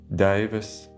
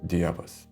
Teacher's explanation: in Prussian, the Proto-Baltic diphthongs ei and ai were retained. Whereas in Lithuanian and Latvian, they later became ie.